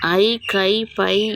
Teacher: ஐகார எழுத்து தனித்து வரும் இடங்களில் தனக்குரிய 2 மாத்திரை அளவில் முழுமையாக ஒலிக்கிறது